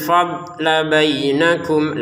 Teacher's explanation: Wala tansawul fadla bainakum, dotnya jangan dipantulkan, jadi jangan dibaca fadlah gitu. Ya, salah kalau seperti itu.